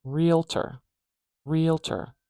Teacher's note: we have the stress at the beginning